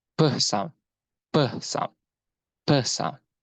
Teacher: Okay, for the first word is perfectly, is a plosive, and it's a p sound, p sound, p sound. It's complete block of air followed by explosion.